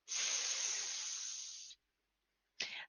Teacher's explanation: Use lots of breath to help you get that hissing S sound strong. Remember that S is voiceless, pronounced without the voice by pushing the air between your teeth and through open and rounded lips.